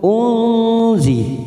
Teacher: nun sukun bertemu Zain ikhfa ausat kita samarkan tiga ketuk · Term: ikfa ausat